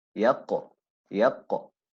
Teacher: So it's a heavy stoppage